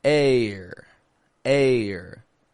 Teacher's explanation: the combination is the long a with an unstressed R